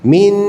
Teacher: bila seseorang tu baca ikhfa dengan meletakkan lidah ke gigi dia jadi min